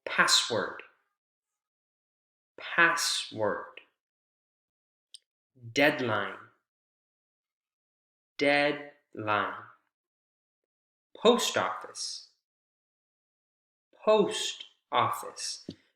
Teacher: the primary stress usually falls on the first syllable in compound nouns